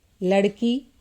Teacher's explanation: वहां भी हमें दीर्घ अक्षर पर बलाघात करना होता है जैसे लड़की तो यहां पर की में बलाघात है